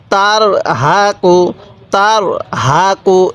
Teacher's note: র টা একটু মোটা করে উচ্চারণ করবেন